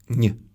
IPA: ɲ